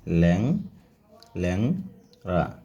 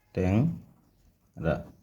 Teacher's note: শব্দের প্রথমে এ থাকলে তারপরে নাসিক্য ধ্বনি থাকলে এ ধ্বনির উচ্চারণ বিবৃত হয়